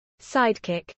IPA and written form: ˈsaɪdkɪk (sidekick)